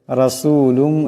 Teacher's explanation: যা এখানে জিমের উপর মদ আছে, এটাকে অবশ্যই লম্বা করিয়া পড়তে হবে। রাসূলুম এখানে রার উপর জবর আছে, রাকে মোটা করিয়া পড়তে হবে